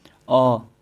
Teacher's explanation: अ ऐसा लगेगा दोस्तों कि आपका जीभ के मध्य हिस्सा से उच्चारित हो रहा है। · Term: मध्य स्वर